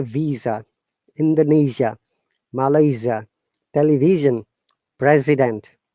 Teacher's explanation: these are all z sound there is no s sound anywhere